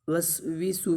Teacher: واو کے نیچے زیر ہے اس کو لمبا نہیں کریں گے، اور سین کے اوپر پیش ہے اس کو بھی لمبا نہیں کریں گے